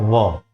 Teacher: ओठ है इस का प्रयोग व के उच्चारण में करते हैं जब व हम बोलते हैं तब ऊपर का दांत नीचे के ओठ को स्पर्श करता है